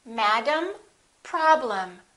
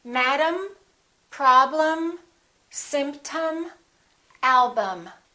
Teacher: Look at the EM of the word problem. The first syllable is stressed, and the EM will sound exactly the same as the AM of the word madam. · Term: reduced syllables